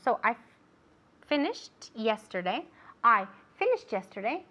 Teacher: Now here we can even link the sounds together. Finished yesterday because we have the T sound and then the Y.